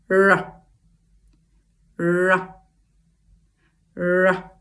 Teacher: the tip of the tongue is under our palate, but it's not touching anything there